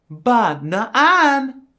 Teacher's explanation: Then there's accent 2, which goes from low to high to low.